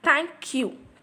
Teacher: thank is a strong syllable and you is a weak syllable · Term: Troi